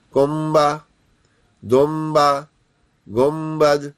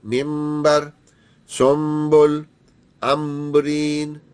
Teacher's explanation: तनवीन या नून साकिन के बाद हरफे बा अगर आ जाए तो यह बदल देता है नून को मीम से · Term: इकलाब के गुने